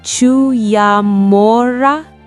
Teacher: feeling the scrape of the ‘G’ in the back of his throat · The guttural ‘G’ at the front, and the ‘oe’ that sounded like ‘oo’.